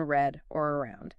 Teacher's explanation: For many non-native speakers, the tongue position is tricky. In English, the tongue curls back slightly, and importantly, it doesn't touch the roof of your mouth. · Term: English R sound